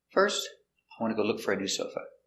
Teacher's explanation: intonation goes down at the end for an affirmative statement